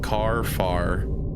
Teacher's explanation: We don't sound any final R in our words like car, far. Phonetically, our common pronunciation is indistinguishable from ka, fa, selected letters 3, 4 times. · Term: New England accent